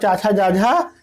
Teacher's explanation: जब मैं यहाँ पर बात करूंगा चा वर्ग की तो चा वर्ग का उच्चारण स्थान तालु बन जाएगा